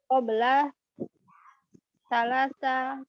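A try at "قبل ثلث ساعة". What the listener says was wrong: kalau salasa itu lamnya panjang. lamnya pendek, kita kira-kira apa? Kalau salasa itu lamnya panjang. Salas. Kalau lamnya pendek seperti itu bacanya apa? Ah, qabla thuluthi sa'atin.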